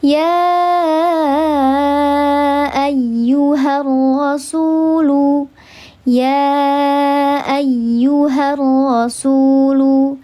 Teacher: Seperti aku dan kamu terpisah jarak dan waktu, maka mad jaiz munfasil juga terpisah. Antara mad dengan hamzahnya terpisah dalam 2 kalimat. Maka dibacanya dia 4 atau 5 harakat.